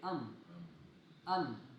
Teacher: आपके होठों के तरी वाले हिस्से आपस में लग रहे हैं। जिससे आपको मीम का मखरज मालूम हो गया।